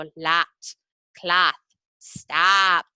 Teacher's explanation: the short O sound turns into a nasal A, so a lat, cloth, stop.